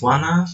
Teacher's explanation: the T sound is weakened and assimilated into the surrounding nasal environment, resulting in a single nasal consonant N. This reflects regressive assimilation in casual speech.